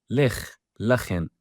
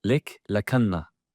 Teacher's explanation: In Latin letter Punic, k is often written ch, indicating that Romans perceive it as aspirated cha, or possibly velar fricative-like. Examples: lech, lachen, instead of expected lek, lakanna.